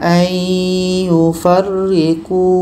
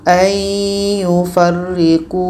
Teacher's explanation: Wa yuriduna ayyufarriqu, bunyi nun masuk ke ya. Bunyi nun kita masukkan ke ya. Dan diiringi dengan dengung. Dengung 2 harakat. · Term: idgham bi gunnah